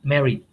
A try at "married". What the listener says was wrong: But R is in between two vowel sound. R should be pronounced.